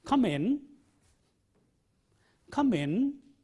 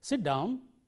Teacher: the secret of this politeness in expression is the rising tone